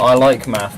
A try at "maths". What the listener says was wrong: It's maths, not math. That's how it's pronounced in the UK.